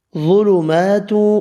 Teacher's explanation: فی یا مدہ ہے، 1 الف کی مقدار میں کھینچ کر پڑھیں گے، ظلمات ظا حروف مستعلیہ ہے، پر پڑھیں گے